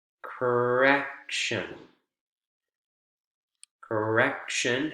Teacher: correction correction has three syllables three vowel sounds c a correction middle syllable is the strongest and it's the one that comes right before the suffix